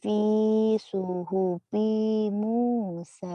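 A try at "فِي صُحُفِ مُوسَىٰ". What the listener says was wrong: Kurang nekannya kurang benar. Fi suhufi Musa gitu atau non?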